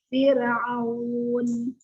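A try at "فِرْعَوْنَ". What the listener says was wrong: Diulang lagi lebih tipis lagi.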